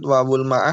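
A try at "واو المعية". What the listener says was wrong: ma'ah nggak ada, wawu ma'iyah adanya. Iya, wawu ma'iyah adanya.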